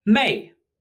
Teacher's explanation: Mei, like beautiful with a falling tone.